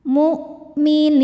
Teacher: hamzah itu salah satu sifatnya dari segi suara syiddah. Suaranya tertahan saat kita tekan.